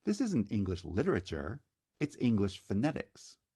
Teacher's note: And notice the accent lands on words, and then within the word, it appears on the stressed syllable. So phonetics is stressed on the second syllable. Literature is stressed on the first syllable. So when they find themselves in the accented position in the sentence, that's where the accent gets pronounced.